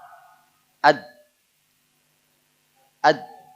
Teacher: lidahnya itu nempel di antara gigi dan gusi jadi kena gusi kena gigi · ujung lidah dengan pangkal gigi seri atas